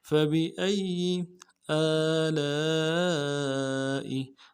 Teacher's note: سے ادا کرنا ہے، با کو نرم سے ادا کرنا ہے، حمزہ کو یا کے ساتھ ملانا ہے، یا کے اوپر تشدید ہے، زور دیں گے